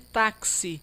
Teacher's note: uma única letra, X, produzindo dois fonemas, dois sons, um de K e o de S